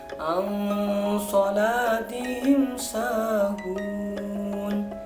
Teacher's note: Ini dibaca samar. Alasannya nun sukun bertemu sod. Ini adalah hukum bacaan ikhfa hakiki.